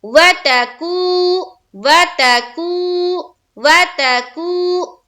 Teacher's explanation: واو ساکین اور اس سے پہلے کیا ہے؟ پیش ہے، یا واو مدہ کا قاعدہ، یعنی کہ ایک الف کے برابر کھینچنا ہے